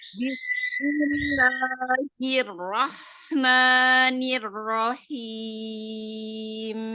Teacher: Hir itu tidak ada tamtid